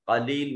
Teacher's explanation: कलील में क़ाफ को सिफत इस्तिला के साथ मोटा और पुर करके पढ़ेंगे